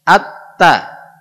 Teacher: Huruf ta itu letaknya ujung lidah dengan gusi.